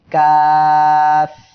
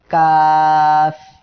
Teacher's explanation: জিহ্বার গোড়া থেকে একটু আগে বাড়িয়ে তার বরাবর উপরে তালুর সঙ্গে লাগায়।